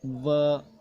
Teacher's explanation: दांत ऊपर के उपयोग में आते हैं और होठ नीचे का उपयोग में आता है